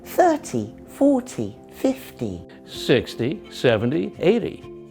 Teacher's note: So the first syllable is longer, louder, and higher in pitch. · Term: stress